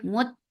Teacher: Mut for the circle lips attached with ta. Ta will get sifa of shidda. No flow of sound will be there. Mut, and then for fatha upon your jaws, and the sound will be short.